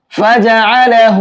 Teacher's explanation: ہا کے اوپر الٹا پیش ہے، ایک الف کے برابر کھینچ کر کے پڑھیں گے۔